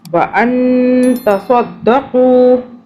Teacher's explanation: قاف کو موٹا پڑھنا ہے، قاف ذرا حلق سے